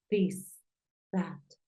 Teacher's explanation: la th es como como una d como una Z no es tan fuerte como una t porque es un sonido dental